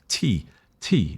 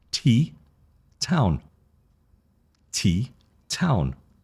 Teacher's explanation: When you talk about T, there's also a puff of air. T. If you hold paper in front of your mouth, T, you will feel that air.